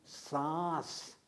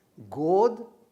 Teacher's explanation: अनुनासिक अर्थात जिसमें नाक और मुंह दोनों से प्रश्वास निकलता है, इसको हम कहते हैं अनुनासिकता।